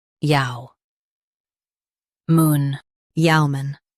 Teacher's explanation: Emphasize yeo and keep mun light.